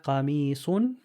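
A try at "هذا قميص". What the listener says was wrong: Extend the E a little bit more. Qamisun.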